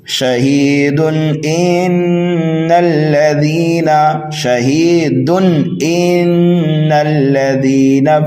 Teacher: جو پیچھے قواعد آیت پر پائے جا رہے تھے وہی یہاں پر بھی پائے جا رہے ہیں لیکن ملا کر آپ پڑھیں گے تو یہاں پر قاعدہ اب بدل رہا ہے. جب ہم ملا کر کے پڑھیں گے تو یہاں پر اظہار حلقی ہوگا. اظہار کریں گے اس لیے کہ تنوین کے بعد حروف حلقی میں سے حمزہ آ رہا ہے